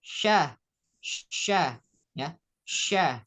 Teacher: Sa. Sedangkan shin ya, keluarnya dari tengah lidah. Jadi tengah lidahnya naik ke atas, langit-langit mulut.